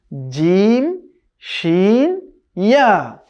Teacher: এই তিনটি হরফ উচ্চারণ হয় জিহ্বার মধ্যখান এবং তার বরাবর উপরে তালুর সঙ্গে জিহ্বাকে টাচ করে